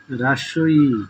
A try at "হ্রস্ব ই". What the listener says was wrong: রস্বই। রাস্বই বলা যাবে না তো। রস্বই, হ্যাঁ।